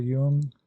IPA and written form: ˈjʊŋ (Jung)